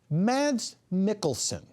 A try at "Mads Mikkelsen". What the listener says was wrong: Yes, and it's Maz. You don't pronounce the D.